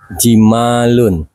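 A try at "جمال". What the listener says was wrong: Tep, jimalun, benar.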